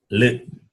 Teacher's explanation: the tongue touches just above the upper teeth. L. So therefore, the sound is called dental.